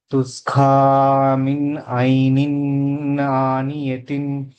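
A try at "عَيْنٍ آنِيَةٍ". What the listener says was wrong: ఐనిన్ దీర్ఘం లేదు, త్వరగా చదవాలి. ఐనిన్ ఆనియతిన్. ఐనిన్ ఆనియతిన్. తుస్కా మిన్ ఐనిన్ ఆనియతిన్.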